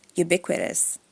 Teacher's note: American English, stress on the second syllable, ubiquitous